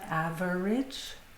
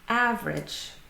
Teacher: But in fact, when we pronounce the word in speech it's not a-ve-rage but ave-rage. So the middle vowel sound or the middle syllable is dropped from the word completely.